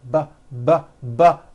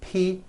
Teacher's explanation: this time we'll add voicing by vibrating our vocal cords now we won't change a thing with our mouths will keep